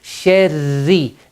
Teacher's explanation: Ra is mushaddad, so you pause just a shade to show that it's a shadda.